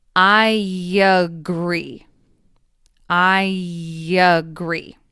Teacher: there is a y sound between I and at the beginning of agree